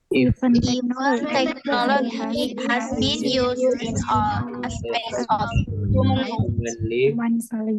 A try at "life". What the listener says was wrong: Bukan live, tapi life, ya.